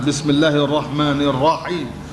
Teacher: ra baris di atas ni wajib kena tebal